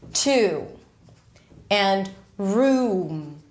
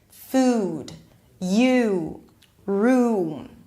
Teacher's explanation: So it's a tense sound. The back of the tongue is all the way up there. The body of the tongue is really close to the soft palate in the back, right? And the lips round. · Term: Tense U